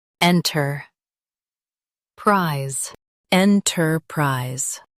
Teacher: Emphasize en and keep prise clear.